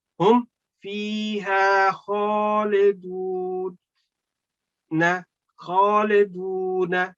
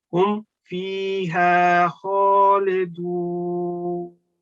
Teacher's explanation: as soon as you are going to stop here, this noon fatha will change into noon sakin, and then you can prolong it as 2, 3, 4 seconds, because then this haruful maddul waqf can apply.